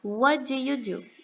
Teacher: Percebam que aqui em what do, a gente não pronuncia a letra T, porque a letra D, ela vai ter mais entonação.